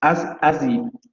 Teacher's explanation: La desaparición o la caída del fonema glotal fricativo, as it, y luego la glotalización.